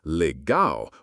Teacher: with the stress on the last syllable